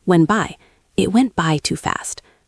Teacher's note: The T in went is often very soft or even silent when we speak quickly.